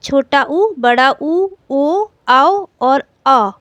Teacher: ओष्ठ यानी होंठ को वृत्ताकार करके जिन स्वरों का उच्चारण होता है उन्हें वर्तुलित या वृत्तमुखी स्वर या गोल स्वर या ओष्ठ स्वर कहते हैं।